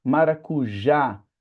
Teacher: Maracujá, a ênfase tá na última, né? A gente não fala maracuja e nem maracuja. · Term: oxítona